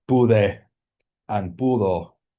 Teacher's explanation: So you get pude and pudo with exactly the same monophthong as you get in pudieron, right? Where stress is not on the root.